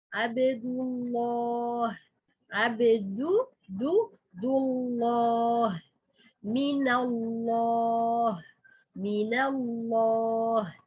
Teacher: Even the vowel which preceded lam of Allah subhanahu wa ta'ala, it's dhamma or fatha. This lam for Allah subhanahu wa ta'ala become heavy.